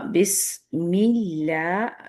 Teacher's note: بسم اللہ، بس پہ آپ نے صفیر کو واضح رکھنا ہے، سین کی۔ بسم اللہ، میم کی زیر بھی باریک ہے، اس کی وجہ سے لام جلالہ بھی باریک ہے